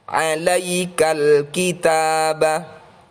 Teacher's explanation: alif lam komariah dibaca jelas pada lam yang bertanda sukun.